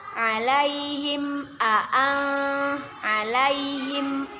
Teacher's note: Hukum bacaannya ya izhar syafawi. Kita baca dengan jelas, tidak boleh berdengung.